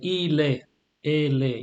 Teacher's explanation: you push over the last consonant. Only when you have a vowel next to it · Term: liaison